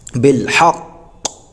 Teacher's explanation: تشدید کو باقی رکھا لیکن ہم نے حرکت کو یہاں پر ظاہر نہیں ہونے دیا ، حرکت کیا تھی؟ زیر تھا، ہم نے زیر کو بالکل